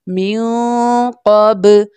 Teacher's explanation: नून साकिन के बाद क़ाफ लेटर है जो कि इख्फा लेटर है इसलिए हम यहाँ पर इख्फा यानी गुन्ना करके पढ़ेंगे